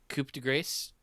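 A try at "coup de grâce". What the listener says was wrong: Yeah, well, no, it's coup de grace. Like you actually do pronounce the S in French.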